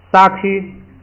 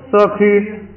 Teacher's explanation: 咱们先读本音啊，撒区，然后啊变的闭一点就是就是色区